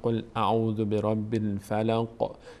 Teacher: انگار که یک لرزشی مخرج در هنگام تلفظ داره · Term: قلقله